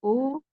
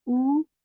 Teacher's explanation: ओ मजहूल आवाज़ है, इस आवाज़ से हमें नहीं पढ़ना है। ऊ ये मारूफ आवाज़ है वाउलीन की।